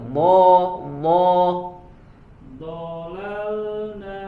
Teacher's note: Huruf bo dari samping, bo bukan dari depan sumber suaranya.